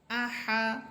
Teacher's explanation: এরপরের শব্দ হা এই হা হরফের মাখরাজ ছিল কণ্ঠনালীর মধ্যখান আর এই হা হরফটি আমাদেরকে একটু এমন ভাবে বলতে হবে যে মুখের ভিতর থেকে যে বাতাসটা বের হইতেছে ওই বাতাসেরও যেন শব্দ হয়